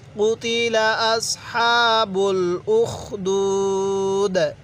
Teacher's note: ওয়াকফের সময় কিন্তু আমরা এখানে 3 আলিফ টান দিব মধ্যে আরজি হিসাবে, কারণ একটি নিয়ম স্মরণ রাখব, মদের হরফের পরের হরফে ওয়াকফ হলে সেখানে আমাদের 3 আলিফ টানতে হবে।